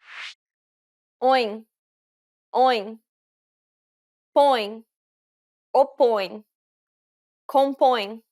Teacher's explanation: this is a closed o sound so don't open your mouth too widely